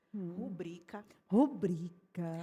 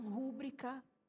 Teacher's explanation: rubrica é paroxítona e não proparoxítona